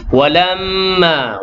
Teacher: mi yang tasydid tu wajibul gunnah, wajib dengung 2 harakat